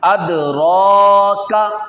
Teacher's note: वमा अदराका, रा के ऊपर खड़ा ज़बर है, स्टैंड खड़ा ज़बर, ज़बर जो है, तो इसको एक अलिफ खींचना भी है, रा को मोटा भी करना है।